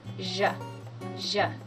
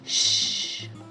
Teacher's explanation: the zh sound is pronounced by vibrating your vocal cords. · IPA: /ʒ/